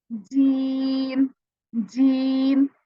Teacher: उसके बाद क्या होता है कि हम इसके साथ यहाँ पे तालू के साथ लगाने की बजाय हम दांतों के साथ जबान को लगा देते हैं